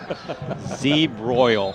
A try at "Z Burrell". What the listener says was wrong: No, there's not a broil. It's a Burrell.